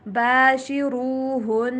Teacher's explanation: را کو موٹا کر کے پڑھیں گے